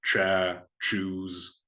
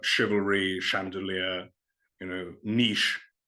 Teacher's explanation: you don't pronounce this as a ch, as you would have in Old French, you would pronounce it as a sh